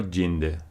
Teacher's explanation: k and g before front vowels were palatalized to q and j